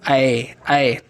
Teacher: कंठ और तालू दोनों मिलकर के आवाज निकाल रहे हैं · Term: कंठ तालव्य